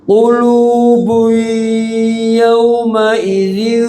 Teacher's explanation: dengung ditahan dua tanwin bertemu ya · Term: idgham bighunah